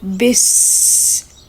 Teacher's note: And after the ba with the Kasra, we have the Seen Sakin. Now, Seen characteristic is whistle. So we will say bis.